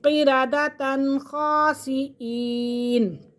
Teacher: غنہ نہیں کریں گے کیونکہ تنوین کے فوراً بعد خا آ رہا ہے اور خا حروف حلقی میں سے، تو یہاں پہ اظہار حلقی ہو رہا ہے۔